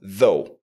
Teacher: on a un voiced th qui se prononce the et le Ou Gh va se prononcer O tout simplement